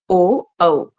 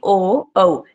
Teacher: एक तो जो हमारा कंठ है मतलब गला है वहां पर थोड़ी वाइब्रेशन हो रही है, और दूसरा हमारे जो ओष्ठ है उसमें भी जो है हलचल हो रही है, तो इसका उच्चारण स्थान क्या होगा, कंठोष्ठ है।